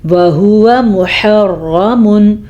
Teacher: را کو ہم نے پر پڑھا کیونکہ را کے اوپر زبر ہے اس لیے را پر پڑھی جائے گی.